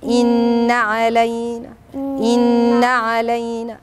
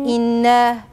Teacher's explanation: لما أقول إنا يبقى أنا زودت ألف، أنا ما عنديش ألف، أنا عندي نون مشددة، أدي الغنة واتنقل على الحرف اللي بعدها على طول، ما زودش صوت زيادة فيدي أو يوهم إن في حرف، ويبقى أنا في الحقيقة ما عنديش حرف، أنا اللي ما نطقتش النون مظبوط.